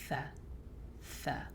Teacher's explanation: tha comes from the tip of the tongue at the edge of the upper central incisors. Tha, and you can see your tongue sticking out when you say tha.